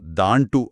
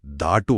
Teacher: ಅನುಸ್ವಾರ ಅಂದ್ರೆ ಸೊನ್ನೆ ಇದೆಯಲ್ಲ, ಕೆಲವು ಪದಗಳಲ್ಲಿ ಹಳಗನ್ನಡದಲ್ಲಿದ್ದ ಅನುಸ್ವಾರ ಆಮೇಲೆ ಹೋಯಿತು